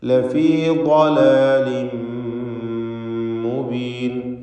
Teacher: ളാദിന് പൂർണ്ണമായ തഫ്ഖീം കൊടുക്കുക. ഇസ്തിഅലാന്റെ ഹർഫാണ്.